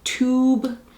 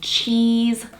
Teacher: Long vowels would be like the U in tube or the E in cheese, like long stretched out vowels.